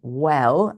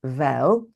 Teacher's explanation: regularly pronounces a w sound as a v sound